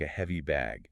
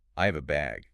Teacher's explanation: Heavy ends with an E sound, like a heavy bag. Have ends on the V sound. I have a bag.